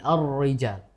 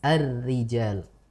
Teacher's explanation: kita baca tipis saja karena iya, memang ini ro-nya kasroh dan dibacanya dengan tarqiq atau tipis